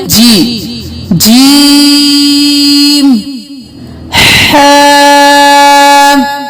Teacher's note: अब जीम नहीं करेंगे, नाक की आवाज नहीं लेके जाएंगे